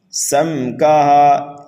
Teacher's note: سم کے اندر ہمیں غنہ نہیں کرنا ہے بلکہ یہاں پر اظہار شفوی ہوگا